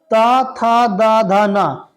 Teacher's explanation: जिन वर्णों के उच्चारण में हमारी जीवा दांतों को स्पर्श करती है उनका उच्चारण स्थान दंत होता है